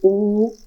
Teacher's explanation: यानी दो पार्ट होते हैं, या तो शब्द बोलने में, वर्डों को बोलने में, या तो आपका गोल हो जाएगा, जैसे ऊ बोलोगे तो गोल हो रहा है ना, यानी वृत्त के आकार का हो रहा है। यानी ओठों की स्थिति के आधार पर दो भाग होते हैं। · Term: वृत्तमुखी